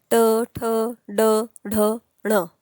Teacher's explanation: जिथून तुम्ही ट ठ ड ढ म्हटले तिथेच न ची पण जीभ टच झाली पाहिजे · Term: ट वर्ग